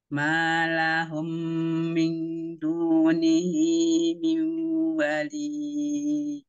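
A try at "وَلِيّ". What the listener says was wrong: Ya, kalau mau berhenti, wali, tanpa dipanjangkan. Karena ada iya tajdid.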